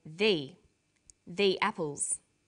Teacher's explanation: there is a difference in pronunciation though when the comes before a vowel sound we say thee